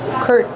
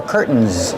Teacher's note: you can use the stop T. Curtain. And then link to the N sound.